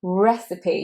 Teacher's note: Normally we ignore that final E, like in ice or right, but here we say it and it is long E, so it's recipe. You want your mouth to widen to make that long E sound. Recipe. You want to kind of smile to make long E.